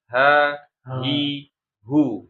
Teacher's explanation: Huruf H dia tempat luarnya adalah di pangkal tenggorokan. Pangkal tenggorokan sebagaimana huruf Hamzah.